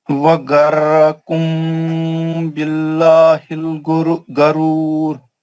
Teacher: وغرکم میم ساکن اخفاء شفوی حرف با